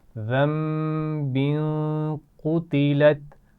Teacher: ذنب یہاں پر بھی غنہ ہوگا کیونکہ تنوین کے بعد حروف حلقی بھی نہیں ہیں، لام اور را بھی نہیں ہے تو یہاں غنہ کیا جائے گا.